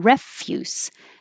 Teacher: if it's a noun refuse stress on the first syllable means garbage